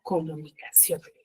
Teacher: tiene la mayor fuerza de voz en la última sílaba y termina en la N. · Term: palabra aguda, aguda